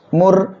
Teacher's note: র সাকিন তার ডাইনে পেশ আসছে মোটা করে পড়তে হবে